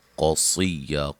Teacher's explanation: قاف کو موٹا، صاد کو موٹا پڑھیں گے